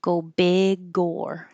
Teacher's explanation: So this G will connect to the O.